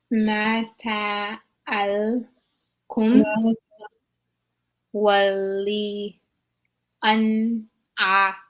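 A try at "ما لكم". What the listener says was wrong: Only thing, make sure that we still pronounce the lamb. Like we go over to the lamb and then we pronounce it again, almost like twice. Mata alakum.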